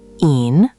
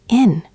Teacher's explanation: Ihn, long E, means him, but in, short E, means in.